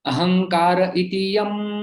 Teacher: विसर्ग का लोप हो जाता है, आगे स्वर है इसलिए